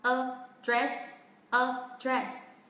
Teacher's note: tất cả các âm tiết nó có cùng một cao độ như nhau